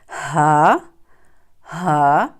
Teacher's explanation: اب ہا جو ہے اور حمزہ یہ اقصی حلق سے ادا ہوتے ہیں، یعنی جو سینے کی طرف والا حصہ ہوتا ہے، ٹھیک ہے، گلے کا سینے کی طرف والا حصہ، میں یہاں پہ لکھ لیتی ہوں، سینے کی طرف والا حصہ۔